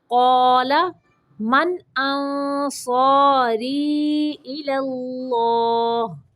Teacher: پہلا لام باریک اور دوسرا لام موٹا پڑھنا ہے